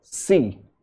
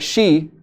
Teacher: some people have problem and they say sa for sha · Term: sh sound